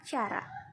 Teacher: C kecil bunyi hambat lamino palatal tak bersuara